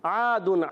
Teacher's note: عین جو ہے ادا ہوتا ہے حلق کے درمیان والے حصے سے